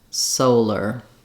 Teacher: So solar, having to do with the sun, has the first syllable stress, and letter O says the O diphthong, just like in soul · And the letters AR in solar, actually in both of these words, don't say R, but rather just So AR at the end of the word often just has a reduced vowel, just a monophthong rather than a diphthong R. So in solar, you want to think about lengthening on your so and then keeping your lr fairly short.